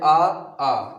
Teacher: तो देखिए इनका जो उच्चारण स्थान है वो हम कई भागों में पढ़ेंगे, जैसे कि ये जो आ है और प्लस आ है, इसका जो उच्चारण स्थान है वो क्या है, वो है कंठ। यानी कि जब हम बोलते हैं आ तो ये होता है कंठ से आवाज निकलती है